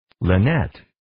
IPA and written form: ,laɪ'nɛt (Lynette)